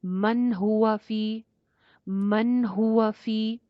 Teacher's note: اس کے بعد نیکسٹ آیت میں جی من ہوا، لاسٹ میں آئیے 29 آیت، من ہوا فی ضلال مبین ہے نا، تو من ہوا نون ساکن ہے، نیکسٹ لیٹر ہا ہے، حروف حلقی میں سے ہا ہے، تو یہاں پہ بھی آپ نے غنہ نہیں کرنا، سٹے نہیں لینا، نون کو شو کر کے پڑھنا ہے